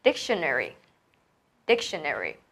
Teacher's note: nhấn vào cái âm tiết mà mình cần phải đọc nhanh, to hơn, dài hơn, mạnh hơn. Thì đó chính là trọng âm. Đó là âm tiết đầu tiên.